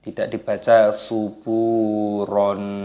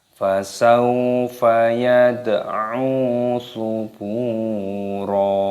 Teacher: ba-nya dipanjangkan, ada wawu sukun, dua ketukan, dibaca subura. Tidak dibaca suburon. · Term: mata iwad